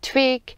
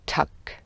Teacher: it is important to notice that in the word twig is not aspirated as it is in the word tuck